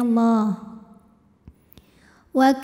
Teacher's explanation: secara tafhim karena nunnya ini baris fathah maka cara bacanya adalah dibunyikan dengan tebal ya pangkal lidah kita naikkan